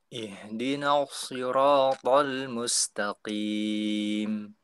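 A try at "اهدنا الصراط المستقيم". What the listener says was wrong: Ya, sudah bagus.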